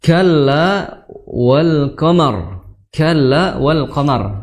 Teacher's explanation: Makhraj huruf kaf adalah di lidah bagian pangkal, ya, bagian pangkal. Lidah bagian pangkal bertemu dengan langit-langit bertulang